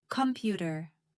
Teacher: Computer stress is on the second syllable.